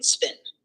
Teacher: The unaspirated P without a puff of air occurs after like in spin